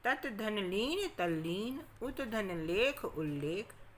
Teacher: तो ता के बाद ला हो तो ता भी ला में बदल जाएगा।